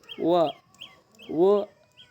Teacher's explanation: ದಂತ ಮತ್ತು ಓಷ್ಟದ ಸಹಾಯದಿಂದ ಹುಟ್ಟುತ್ತದೆ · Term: ದಂತೋಷ್ಟ್ಯ